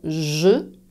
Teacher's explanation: quand tu prononces le son jeu il n'y a pas d'air qui passe